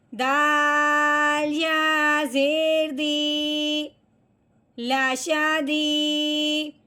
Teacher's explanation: یا ساکن ہو اور اس سے پچھلے حرف کے نیچے زیر آ جائے تو وہ پچھلے والا حرف اس کے ساتھ ملتے ہوئے ایک الف کے برابر لمبا بھی ہوگا